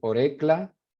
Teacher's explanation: So auricula. What happened to that unstressed vowel in the middle, that U? It fell out